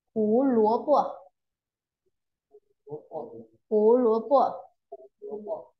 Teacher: Âm tiết thứ hai thì được nhấn mạnh và kéo dài nhất. Nghĩa nhấn mạnh ở cái chữ có dấu chấm đỏ ở dưới ấy, là âm tiết thứ hai ấy. · Âm tiết thứ nhất thì đọc nhấn rộng và kéo dài vừa phải. Còn âm tiết thứ ba thì đọc phát âm nhẹ và nhanh nhất.